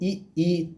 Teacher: तो इ ई तालु से होता है।